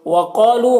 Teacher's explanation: قاف کو پر پڑھیں گے، الف مدہ ہے، ایک الف کے برابر کھینچیں گے